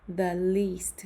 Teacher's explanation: suena como una I sonriente